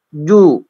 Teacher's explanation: ju itu mulut mencucu ya. Mencucu ke depan. Agak monyong gitu. Monyong ya, agak monyong ke depan dia.